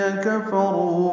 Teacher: کفروں میں کاف فا جلدی پڑھیں گے، کاف باریک ہے، را پر ہے، رو واو مد ہے، یہ 2 حرکات لمبا ہے